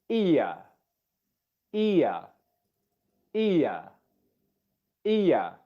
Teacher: We know that the I sound is higher up in the mouth, and the lips are wider apart than the schwa sound.